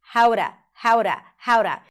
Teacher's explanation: Notice how she connects the how to. So the T of the word to becomes flapped.